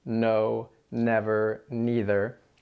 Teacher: our English N, which happens with our tip of our tongue against the roof of our mouth